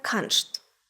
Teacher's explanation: на півдні зокрема це дуже характерно для Швейцарії ст читаємо як шт завжди незалежно від того де розташована ця комбінація букв у слові і вийде саме каншт ще одна фонетична відмінність південного діалекту полягає